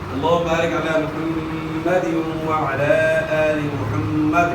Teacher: وقف کریں گے تو دال ساکن ہو جائے گا